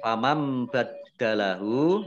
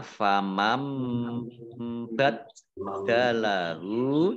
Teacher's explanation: nun sukun bertemu dengan huruf ba, bacaan iqlab, ya, dibaca membalik. Baknya dibaca mim dulu, ya, ada mim kecil berdiri, dibacanya famam baddalahu, dalnya dibaca double, ada tasdidnya.